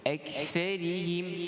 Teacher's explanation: Hujung lidah bertemu bawah gigi yang di hadapan. Kemudian ra dibaca dengan kasrah, dibaca nipis.